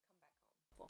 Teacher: it's quite common to make the h sound quite soft